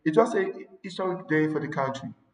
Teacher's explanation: there are some accents that tends to drop the letter, the sound H. So when you have such an accent, you say it was a historic day for the country.